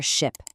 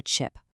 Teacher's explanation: the English ch has a hard t sound right at the front of it